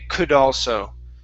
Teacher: take that D and put it at the beginning of also. All right, it makes it much easier to say it, but the trick is you cannot stop between those words.